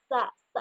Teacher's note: Ada udara yang keluar dari gesekan tersebut dan tidak bergetar pita suara.